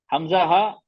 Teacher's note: तो गले के निचले हिस्से से निकलते हैं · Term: हरूफ हल्की